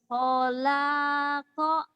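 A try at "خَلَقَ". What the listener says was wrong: ho-nya pendek atau nen? Enggak, la-nya panjang. Lamnya panjang. Khola, kholaqa.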